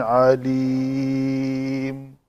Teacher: تو میم کا مخرج ہے، جب اس کے اوپر رکیں گے آگے تو دونوں شفتین کا خشک حصہ آپس میں مل جائے گا